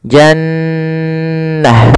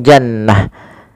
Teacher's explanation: Janah maka di sini Nun tasdidnya kita namakan dengan bacaan gunah cara membacanya adalah suara nunnya ditahan dulu